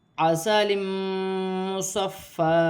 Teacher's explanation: دو زیر کی تنوین کے بعد میم مشدد آ رہی ہے، تنوین میں غنہ بھی کیا جائے گا، ملا کر بھی پڑھا جائے گا